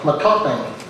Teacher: the Chamorro term matapang, with the glottal stop before the P